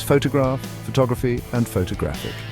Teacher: The stress shifts from the first syllable in photograph to the second syllable in photography and finally to the third syllable in photographic.